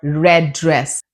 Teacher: Drop one T, one D and connect it to the next sound. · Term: connected speech